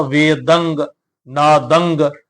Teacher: ਟਿੱਪੀ ਦਾ ਉਚਾਰਨ ਕਰਨ ਲੱਗਿਆਂ ਪਿਛਲੇ ਪਾਸੇ ਗਗੇ ਦਾ ਉਚਾਰਨ ਕਰ ਜਾਂਦੇ ਤਾ ਉਹ ਜਿਹੜਾ ਉਚਾਰਨ ਉਹ ਗਲਤ ਹੈ ਅਸੀਂ ਟਿੱਪੀ ਦਾ ਉਚਾਰਨ ਕਰਨਾ ਨਾਸਕੀ ਧੁਨੀ ਜਿੜੀ ਹੈ ਉਹ ਨਿਕਲੇਗੀ